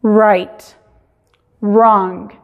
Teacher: No se escucha la W, pero se cambia el sonido de la R. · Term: la W es muda